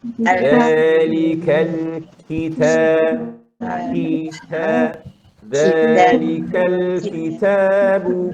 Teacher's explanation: Kemudian perkataan Alkitab. Kaf pun ada angin, ta pun ada angin.